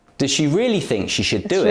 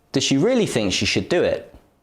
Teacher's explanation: really think and do are stressed does and should are weak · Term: weak forms